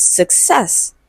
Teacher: Okay, and it is stressed on the second syllable.